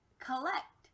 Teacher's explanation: you'll notice that this change from ah to uh we call that a schwa